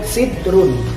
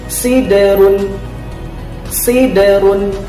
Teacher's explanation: Nah, jadi membacanya bukan sidrun, tapi siderun. Huruf da sukunnya memantul. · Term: qalqalah